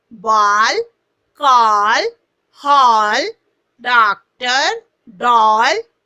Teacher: यह आ और ओ के बीच की ध्वनि है